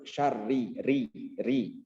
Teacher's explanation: Lalu yang ketiga adalah ro-nya harus benar-benar tipis ya. Ro itu ketika berharokat kasroh, di sini kan harokatnya kasroh ya. Meskipun ada tasdidnya, tetap harus benar-benar tipis ya. Harus ditipiskan benar-benar gitu.